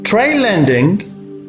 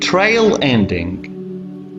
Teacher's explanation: the la here is clear because it's initial position in lending, while trail ending la is darker because it's final.